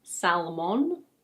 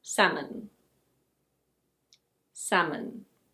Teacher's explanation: the L is silent and the O is a schwa sound. So it's not "sal-mohn".